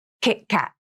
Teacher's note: The stop T also has a crisp, abrupt ending to it. You need to feel that the vocal cords actually come together and close. · Here's the stop T in the word KitKat. I usually use two stop Ts in this word.